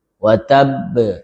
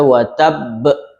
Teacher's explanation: kemudian dia qalqalah kubra karena tasydid